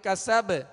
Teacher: اب یہاں با ساکن ہے، کسب بالکل ایزی قلقلہ